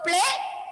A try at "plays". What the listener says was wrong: Plays. I want to hear that hissing sound at the end. Play, plays. Okay, play, plays.